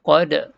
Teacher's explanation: Huruf dal lantunkan qalqalah.